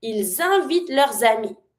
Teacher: I'm linking and connecting everything because I have two vowels from invite, starting with the I, ami, starting with the A.